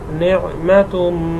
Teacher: তানবিনের পরে ইদগামের হরফ মিম আসছে জন্য গুণ হবে।